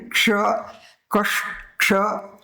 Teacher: તો એ પહેલા જરાક અર્ધ ક બોલાશે અને પછી એ શ બોલાશે, ક્ષ ક્ષ, અને પછી અ બોલાશે. · આ ક વત્તા શ અને એમાં ભળેલો છે સ્વર અ, અને આમ એક ક્ષ થયો છે.